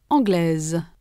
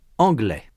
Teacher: In sound, the feminine form anglaise has a final consonant z that is not heard in the masculine form anglais. In the masculine, the final s is not pronounced.